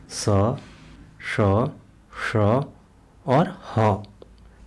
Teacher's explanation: संघर्षी व्यंजन उन व्यंजनों को कहते हैं जिन व्यंजनों के उच्चारण में उच्चारण स्थान आपस में स्पर्श नहीं करते हैं बल्कि एक दूसरे के इतने निकट आ जाते हैं तो उनके बीच से वायु घर्षण करते हुए बाहर निकलती हैं